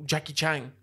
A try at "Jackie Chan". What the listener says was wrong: Chan. Is it Jackie Chan or Chang? You just said Chang. You ching-chonged it up.